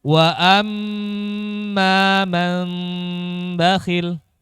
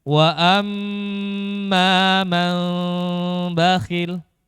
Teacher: Nah, caranya bagaimana? Caranya adalah menyamarkan mim, tapi nggak sampai menyentuh makhrajnya mim. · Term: furjah